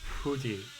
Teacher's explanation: So her H sounds sometimes become like a Japanese F